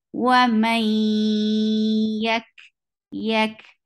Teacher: When you find harufa yarmalun after noon sakin, you create idgham, and idgham is to merge one sound into another. So this noon, the sound of noon is merged into ya.